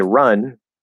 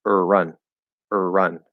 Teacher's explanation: the vowel sound relative to the consonant is going to be slightly longer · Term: er vowel